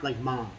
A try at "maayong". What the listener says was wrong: No, mom, there's no M.